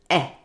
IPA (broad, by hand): e